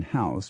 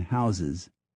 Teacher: the s in house becoming a z in houses